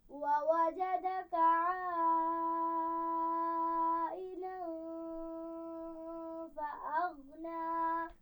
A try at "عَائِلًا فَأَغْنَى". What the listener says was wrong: غنہ کو بہت زیادہ نہیں کھینچیں گے. عائلا فأغنى.